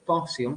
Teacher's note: the primary stress is in the first syllable